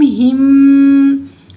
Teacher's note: हा की ज़ेर को मीम जज़म की बजाय मीम मुशद्दद से मिलाएंगे और यहाँ पे हम गुन्ना करेंगे मीम मुशद्दद में